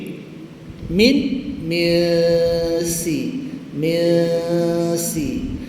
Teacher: Bila jatuhkan hujung lidah angin kita akan keluar daripada dua jalan. Hidung dan mulut. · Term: ikhfa